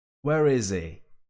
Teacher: Even some people in some regions of the UK and also in the US, people pronounce it with an H dropping style